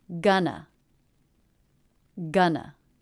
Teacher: The first syllable has the G consonant, as in butter vowel, a nice clean N, and the second syllable the schwa. The first syllable is stressed, gun, and the second syllable unstressed